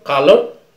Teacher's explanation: British English, they don't really pronounce the r sound, especially when it is in the end of a word, okay, or before vowel, or after vowel sounds, okay? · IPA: ˈkʌlə(r)